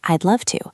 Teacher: the would is often contracted to a very small duh sound